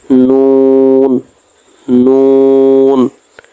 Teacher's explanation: 9 নম্বর মাখরাজ, জিহ্বার আগা তার বরাবর উপরের তালুর সঙ্গে লাগাইয়া